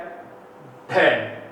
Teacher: 2 ध्वनियां केवल हिंदी में ग्रहण की गई तो ध्वनि है अलग से, जिसे क्या कहते हैं, ड और ढ के रूप में, जो ताड़नजात या उत्क्षिप्त वर्ण के नाम से जानी जाती है